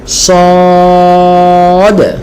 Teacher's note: জিহ্বার আগা, নিচের সামনের দুই দাঁতের গোড়া, সদ উচ্চারণ করতে হবে।